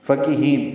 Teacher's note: فا کو جلدی پڑھنا ہے، کاف باریک ہے، ہا کو لمبا کرنا ہے، نون ساکن پہ اظہار ہوگا.